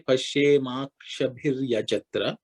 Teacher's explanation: that visarga, which is the 2 dots at the end of akshabihi, visarga, becomes ir. · Pashyema, that ma and a become ma because of sandhi.